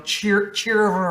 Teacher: the r is kind of like a rolling R like cheer like the dragons that roll there RS you know